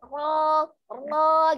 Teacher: Jadi bukan mengangkat pangkal lidah. Jadi pangkal lidahnya tidak ikut terangkat untuk ro tebalnya. Hanya cara menebalkannya menebalkan makhrajnya. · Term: ro yang tebal